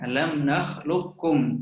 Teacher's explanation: baca terus ke dalam huruf kaf ya. Huruf qaf memang macam tak ada, kan, tapi ada sedikit pendapat atau beberapa ulama yang berpendapat bahwasanya huruf qaf menyisakan sifat isti'la, dia dibaca alam nakhluqukum. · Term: idgham kamil